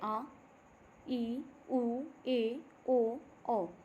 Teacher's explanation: दीर्घ स्वर दीर्घ स्वर हैं। इनको ह्रस्व स्वर की अपेक्षा दोगना समय उच्चारण करते समय पे लगता है।